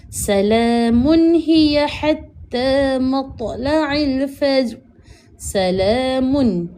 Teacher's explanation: tanwin bertemu dengan ha. Hukumnya adalah izhar halqi iaitu jelaskan bacaan dan tak boleh dengung. Maka dekat sini munca dengan jelas.